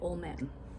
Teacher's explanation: We would drop the D and we say old man. Okay, and again, this is casual, fast speech.